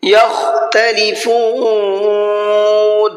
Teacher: خا کو حلق سے نکال کر کے پڑھنا ہے